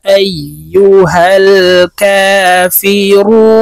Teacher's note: হরফে ওয়াকফু হইলে মধ্যে আরজি তিন আলিফটা নিয়ে পড়িতে হয় তাই এই রুকে তিন আলিফ টেনে নুনকে সাকিন করতে হবে